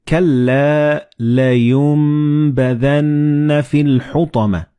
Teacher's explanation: And this meme appears in the middle of the word. So the noon and ba, when they follow one another in the same word, you don't pronounce noon, but you pronounce meme